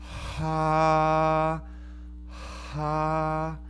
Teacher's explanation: aspirate is that your air flow starts before your vocal folds abduct and so this sounds like this ha a balanced air flow